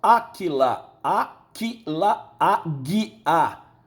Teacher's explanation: O que se transforma em G, houve uma sonorização